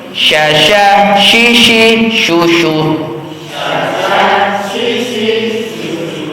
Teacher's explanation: Nah itu huruf syin tafasi udaranya menyebar. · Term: huruf shin